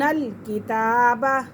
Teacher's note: کتاب تا کے پر کھڑی حرکات ہے اور یہ باریک کاف ہے